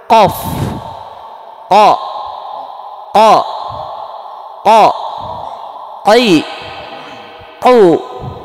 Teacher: Yang keluar dari makhraj aqsal lisan itu pertama qaf, pangkal lidah dekat tenggorokan, sejajar dengan langit-langit lunak, pangkal lidah dekat tenggorokan.